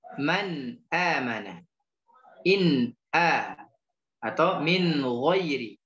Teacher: Jadi dia nunnya terbaca jelas. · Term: dibaca jelas